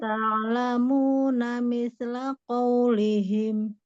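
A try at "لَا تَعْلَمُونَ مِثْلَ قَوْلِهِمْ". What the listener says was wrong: Cuman miss-nya jangan mantul. Misla qaulihim.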